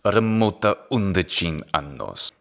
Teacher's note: He puts a glottal stop between remota 11. That's not necessarily a characteristic of Bulgarian, but he's probably doing it to try to make his speech very clear.